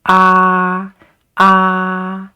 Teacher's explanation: the first tone it is just a line is a flat line